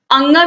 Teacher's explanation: अंग का जो उच्चारण स्थान होता है वो होता है नासिका